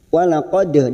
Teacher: dal sukun qalqalah sugroh kita pantulkan. Walaqad ra'ahu ada fathah berdiri di sini 2 harokat kita panjangkan.